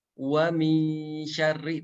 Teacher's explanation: mana gitu ketika membaca wa mi syarri akan kerasa gitu bahwa dengungnya itu bertempat di tengah lidah nempel ke tengah langit-langit atas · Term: ikhfa